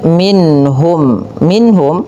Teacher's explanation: ada bacaan izhar halqi. Suara nunnya dibaca dengan jelas. Kemudian [mendengus] mim mati bertemu fa.